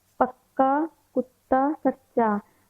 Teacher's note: इन व्यंजनों में दोनों एक समान व्यंजनों का मेल होता है जैसे पक्का कुत्ता सच्चा यहां पक्का जो हमारे पक्का शब्द में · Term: द्वित्व व्यंजन